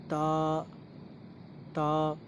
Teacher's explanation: तो ता जो है ज़बान की नोक, जो ज़बान का आगे वाला हिस्सा है बिल्कुल, उसको हमें ऊपर वाले दांतों की जड़, यानी जहाँ पे मसूड़े और दांत मिल जाते हैं आपस में, वो जड़ है, उस पे लगाना है, वहाँ से ता अदा होगा।